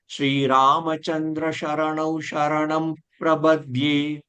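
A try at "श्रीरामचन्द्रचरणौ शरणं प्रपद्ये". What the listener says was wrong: எல்லாம் ஷரணவ் ஷரணவ் தான் வருது. முதல்ல சொன்னது சரணவ் சொன்னேன், அதுக்கப்புறம் எல்லாமே ஷரணவ் ஷரணவ் சொல்றேன். அதை கொஞ்சம் பார்த்து. ஷ வேண்டாம், ச சரணவ். சந்திர ச. அந்த சந்திரோட ச தான். சந்திர சரணம். ஷரணவ் வருது உங்களுக்கு. சாவியோட ச.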